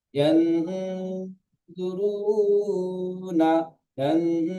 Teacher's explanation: অ সাকিনের ডান দিকে পেশ এসেছে, এটি অ মাদ্দা, অ মাদ্দাকে এক আলিফ পরিমাণ টান দিয়ে পড়তে হয়।